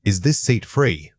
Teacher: Make sure your voice rises at the end. This distinct upward tone signals to your listener that you are expecting information back from them. · When you ask a question like, Is this seat free? make sure your voice rises at the end. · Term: rising intonation